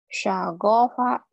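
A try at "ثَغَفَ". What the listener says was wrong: Sa-nya ujung lidah ya.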